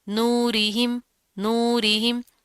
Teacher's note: را کے نیچے زیر ہے تو را باریک پڑی جائے گی ، اس کو آپ نے موٹا نہیں کرنا، اس چیز کا